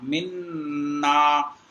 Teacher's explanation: یہ دیکھیں منا، میم کو نون میں ملائیں گے، چونکہ 2 نون ہیں تو پہلا والا نون ساکن ہوگا، تو میم نون زیر من، نون الف زبر نا، من نا۔ تو یہاں پر ایک الف کی مقدار ٹھہراؤ رکھتے ہوئے گننا کرنا ہے، اور غننے میں جو ہے ناک میں پڑھنا ہوتا ہے